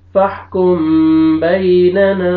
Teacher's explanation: یہاں پہ میم ساکن کے بعد با ہے اخفا کریں گے